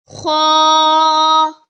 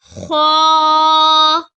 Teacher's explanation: This is heavy letter. Kha comes from upper portion of throat.